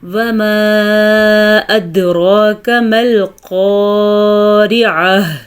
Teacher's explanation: پہلے بھی آپ کو بتا چکے ہیں جب وقف آتا ہے تو گول تا ہا بن جاتی ہے، وقف کی صورت میں گول تا ہا بن کے ساکن ہو جاتی ہے